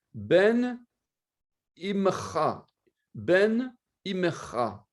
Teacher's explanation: On vocalise normalement le mot Ben avec un ségol, avec un tséré. Mais ici, à l'état construit, cette voyelle longue deviendra un ségol, c'est-à-dire une voyelle courte, puisque c'est un mot construit, donc on va le lire plus vite. Puisque tséré est plus long que ségol.